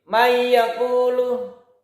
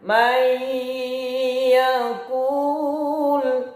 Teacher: Bi gunnah itu dipanjangkan ya, didengungkan itu. Kalau nanti mahir itu didengungkan melalui khaysum atau hidung ya.